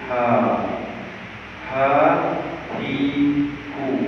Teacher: Ha keluar tempat yang sama, kerongkong bahagian bawah. Tetapi bila kita sebut Ha tu ada angin keluar dulu.